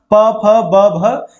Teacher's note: प फ ब भ ये आपका ओष्ठ से आया। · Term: प वर्ग